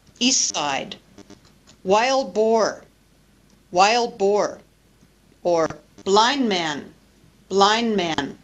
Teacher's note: So the D or the T disappear to make the pronunciation of the word easier. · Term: disappearing D